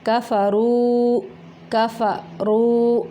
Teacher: लम यकुनिल्लज़ीना कफ़रू, कफ़रू रा मोटा है यहाँ पे और वाव साकिन के पिछले हरफ के ऊपर पेश है, तो ये वाव मद्दा है। दो हरकत अरबी जितना इसको लंबा करना है।